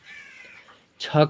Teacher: छ का उच्चारण स्थान होता है तालू